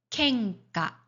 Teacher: 한국어로 이응처럼 발음하는 경우인데 요거는 영어로 표기하면 ng. 자, 이거는 응 뒤에 카, 가, 행 등이 오면 이렇게 발음을 합니다